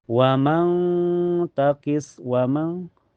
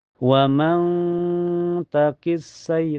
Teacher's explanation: Cara bacanya nun sukunya disamanakan ke ta dan ditahan sampai terasa ke hidung. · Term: ikhfa hakiki